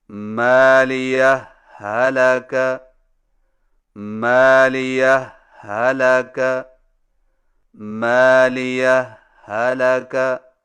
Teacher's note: پہلا طریقہ یہ ہے کہ دو الگ الگ ہاؤں سے پڑھیں لیکن پہلی ہا پر معمولی سا وقفہ کر کے لفظ حلقہ کی ہا کو بغیر تشدید کے پڑھیں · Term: اظہار